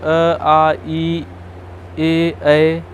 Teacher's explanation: अ, आ, ई और ए, ऐ, इन वर्णों को बोलने में ओठ गोलाकार नहीं होता है, ठीक है। कोई भी इनमें से वर्ण बोलेंगे तो ओठ गोलाकार नहीं होगा। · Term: अवृतमुखी